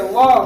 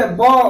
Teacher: जैसे बोलिए व और बोलिए ब, व का उच्चारण करते हैं दोनों ओठ सटता है, और व का उच्चारण करते हैं तब क्या होता है, दोनों ओठ नहीं सटता है। व नीचे के ओठ और ऊपर के दांत के स्पर्श करने से व का उच्चारण होता है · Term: दंतोष्ठम